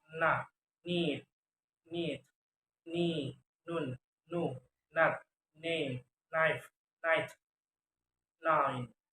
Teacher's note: Voice alveolar nasal sound